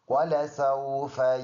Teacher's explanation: واو دونوں ہونٹوں کو گول کرنے سے ادا ہوتا ہے